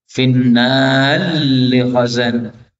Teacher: ra ketemu lam, ini boleh idgham